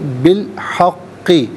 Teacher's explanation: با کے نیچے زیر، اسے الحق کے لام ساکن کے ساتھ ملائیں گے. درمیان میں سے الف یعنی حمزہ کو حذف کیا جائے گا